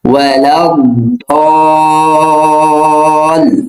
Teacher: দদে 4 আলিফ টান হয়ে তারপর লামে এসে ধরতে হবে